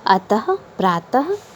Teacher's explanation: विसर्ग का उच्चारण ह के समान होता है और इसका चिन्ह इस बिंदु के समान है हिंदी में प्रचलित